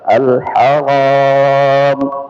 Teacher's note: kemudian al haram ra-nya tebal